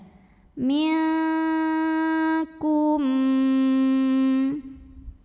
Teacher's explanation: melainkan samar-samar jadi kitab siap-siap menuju huruf kafkum disertai dengungan dan untuk huruf Kaf ini bunyi dengungnya paling besar diantara huruf-huruf yang lain huruf ikhfa yang lain Kenapa karena huruf Kaf ini makhrojnya jauh dari Nun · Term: ikhfa Haqiqi